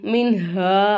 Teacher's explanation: நூனே சாக்கினுக்கு தான் ஹா வந்திருக்கு ஹா வந்து இல்ஹா உடைய எழுத்து அப்ப நம்ம என்ன செய்யணும் நூனே சாக்கினை வெளிப்படுத்தி உச்சரிக்கணும்